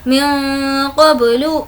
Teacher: नून की आवाज़ को नाक में छुपाएंगे क्योंकि नून साकिन के बाद क़ाफ़ है, हुर्फ़ इख़्फ़ा का क़ायदा है।